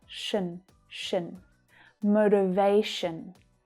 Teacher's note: That last syllable is unstressed. The vowel sound reduces right down to the schwa, so it's short and low in pitch.